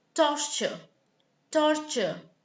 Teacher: torture has two T's. One is a T, the other is a Ch. Torture. Alright?